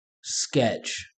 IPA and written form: skɛtʃ (Sketch)